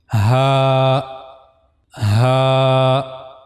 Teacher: for pronouncing ha we have to use the lowest part of the throat which is on the chest side.